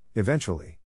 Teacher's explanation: the accent is in the second syllable, corresponding to ven